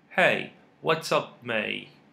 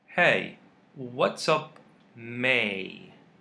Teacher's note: The sound of letter T is silent. We call it in phonetics glottal T.